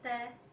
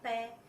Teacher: जब हम त का उच्चारण करते हैं तो हमारी जीभ स्वतः ही जाके दांतों के लगती है और प का उच्चारण करने पर हमारे दोनों होंठ जो हैं वो आपस में मिलते हैं